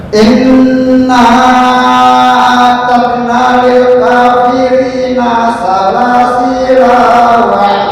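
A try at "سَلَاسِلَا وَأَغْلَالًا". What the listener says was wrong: La pendek. Salasila wa salasila wa agla.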